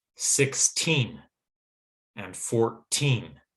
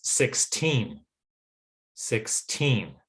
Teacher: now the teen numbers words that end in t e e n we tend to put more stress on the second syllable or more of an equal stress on both syllables